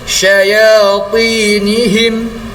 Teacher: Kadar panjangnya adalah 2 harakat. Kemudian huruf ya selepas huruf ta yang berbaris bawah, kadar panjang juga 2 harakat.